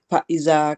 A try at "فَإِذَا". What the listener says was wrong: فائزہ نہیں ہے، زال نرم ہے نا، اور پھر